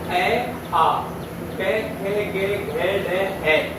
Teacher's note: ये कंठ से उच्चारित किए जाते हैं और इनको कंठे वर्णा बोला जाता है